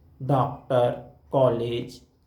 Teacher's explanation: डॉक्टर, कॉलेज, तो हम ना आ बोलते हैं ना ओ बोलते हैं, आ और ओ के बीच की ध्वनि का उच्चारण करते हैं। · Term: आगत स्वर